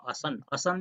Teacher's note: I will teach you later on case mark the words in Nepal vasa they become shorter when it is turned into case mark like a ma assan ma that the there's another additional you know sound is added with that just like asan asan is the original word but when we speak we drop that n and it become n becomes the nasal vowel and when you put the ba or in or at or on then the n appears again and we say it's not like it's not that way.